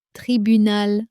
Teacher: The final nasal sound is important. It is not the same as English tribunal.